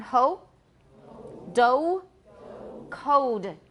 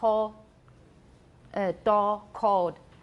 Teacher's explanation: Then there's a vowel that we're going to talk now about the vowel in ho-do code. In American English, it's close to O, but it is a diphthong. It's not just O.